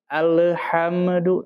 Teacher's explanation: itu lamnya ketika mau masuk ke huruf ha jadi langsung alhamdu kalau dilepas dia akan menimbulkan bunyi qqolah